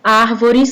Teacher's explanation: Árvores, que tem um acento agudo no A, ele abre o som da vogal.